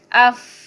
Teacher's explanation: ये जो जुबान है ना दांतों के साथ लगेगी तो ये अदा होगा। अफ, देखे जो दांत है वो होंठों के साथ लग रहे हैं, फा अदा हो रहा है